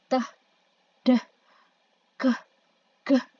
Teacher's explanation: sounds tersebut bunyinya tidak langsung dikeluarkan, melainkan dihambat terlebih dahulu. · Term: stops